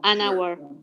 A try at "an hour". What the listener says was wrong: En este caso la H no suena como en casa, que es house. Entonces, como no suena, digo an. Si sonara, digo a, como a house.